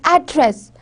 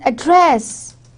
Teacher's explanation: If there is one that is address, in American the stress is on first syllable is address, and whereas in Britishers it is address.